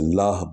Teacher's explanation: یہ ہا جو ہے یہ سینے سے نکلتی ہے، اس کا مخرج جو ہے وہ سینے کی ہڈی ہے